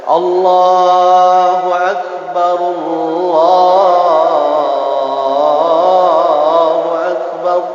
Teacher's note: Jadi harus ditebalkan Allahnya. Jadi tidak Allahu Akbar dan sebagainya seperti itu.